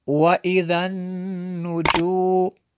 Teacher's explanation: نون مشدد ہے، غنہ کریں گے، ذال کو نرم کریں گے۔